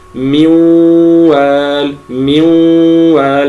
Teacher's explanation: تعالى من والال تكون هيئه الشفتين مضمومه كقوله من من وال نضم الشفتين عند ادغام عند الواو